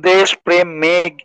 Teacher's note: তৎসম শব্দের প্রথমে ব্যঞ্জন ধ্বনির সঙ্গে যুক্ত এ ধ্বনির উচ্চারণ সংবৃত হয়